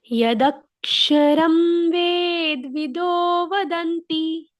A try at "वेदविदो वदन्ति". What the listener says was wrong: अभी तूने फिर से वेद का द आधा किया।